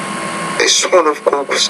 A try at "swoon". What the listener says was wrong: Take that word, ooh, swoon. Make the vowel longer there, swoon. A swoon of cooks.